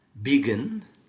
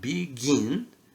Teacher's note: If you write begin, the stress is on the second syllable.